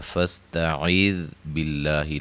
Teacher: لفظ اللہ کے لام کو باریک پڑھیں گے، مد اصلی ہے۔